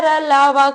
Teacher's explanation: र ल व को अंतस्थ व्यंजन कहा जाता है इनका उच्चारण जीभ तालू दांत और होठों को परस्पर हटाने से होता है किंतु कहीं भी पूर्ण स्पर्श नहीं होता